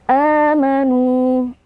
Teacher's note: a mad badal karena ada Hamzah yang bertemu dengan alif ya Hamzah fathah bertemu dengan alif kita baca dua harakat